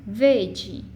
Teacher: Vede, o di é uma sílaba átona, então não devo contar com ela, só conto até a última tônica.